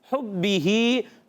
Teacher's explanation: ہا ادا ہوتا ہے حلق کے درمیان والے حصے سے · با ادا ہوتا ہے ہمیشہ, یاد رکھیں با کا جو مخرج ہے ہونٹوں کا تر حصہ, ہونٹوں کے تر حصے سے با ادا ہوتا ہے. با کے نیچے زیر حرکت نہیں کھینچیں گے.